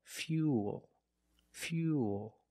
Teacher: We have the same long oo sound after the Y, so it's U, plus the dark L.